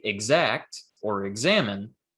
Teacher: when we say exact or examine um we make the g and the z voiced because the sound after it the vowel is also voiced